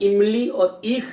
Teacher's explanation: जब इमली और ईख कहते हैं तो जीभ तालू वाले भाग पे हल्की सी स्पर्श होती है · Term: तालव्य